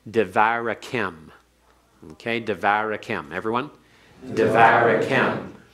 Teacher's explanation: So if it does not begin the syllable, then the schwa before it is vocal, which means the pathic stands in an open syllable